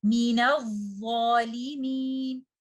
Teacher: when you are reciting these two words together, you will drop hamzatul wasl and you will join letter noon with letter dha. Letter dha is a letter of rakhawa.